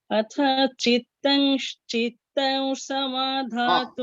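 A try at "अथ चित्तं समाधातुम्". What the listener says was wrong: অথার পরে অতটা গ্যাপ দিও না, তাতেই ভুল হয়ে যাবে। আথা চিত্তম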